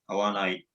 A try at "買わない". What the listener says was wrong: So kawanai. It's not kaanai. Okay, it is not kaanai. It is kawanai.